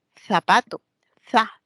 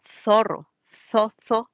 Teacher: también se puede producir un sonido cuando la lengua, la puntita de la lengua, esté entre los dientes, tanto superior como inferior. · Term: interdentales